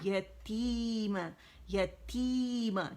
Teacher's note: تی بہت باریک کرنا ہے اور پھر یا مدہ بھی بن رہی ہے نا، یا کا زبر ادا کرنا ہے